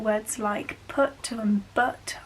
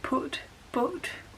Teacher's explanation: There is also no foot strut split, so this means that words like put and but I pronounce the same.